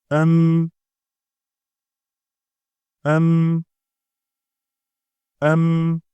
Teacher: ይህን ፊደል የምትወጣው ሁለቱ ከንፈሮች በመጣበቅ ነው። በዚህ ጊዜ በከንፈራችን ሊወጣ የነበረው ትንፋሽ ስለሚዘጋ በአፍንጫችን ይወጣል። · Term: ሚም